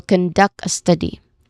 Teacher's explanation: the second syllable of conduct and the first syllable of study are stressed here